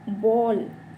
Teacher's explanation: आगत स्वर में क्या हुआ, इसका जो स्थान है आ और ओ के बीच में रखा गया।